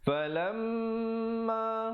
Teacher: Falamma, di situ mim sabdu, hukumnya wajibul ghunnah, wajib dengung 2 harakat di situ